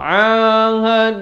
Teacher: lafaz jalalah ini dibaca tebal dua harakat.